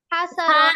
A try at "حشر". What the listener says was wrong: না, সা বলা যাবে না, হ্যাঁ। শিনটাকে একটু শক্ত করে বলবো, হ্যাঁ। জিহ্বার মধ্যখান তার বরাবর উপলে তালুর সঙ্গে লাগাইয়া, হাসার, হাসার, একটু শক্ত করে শিন উচ্চারণ করতে। ছায়ের মতো শোনা যাবে, যদি শক্ত না করো ভুল হবে, হ্যাঁ।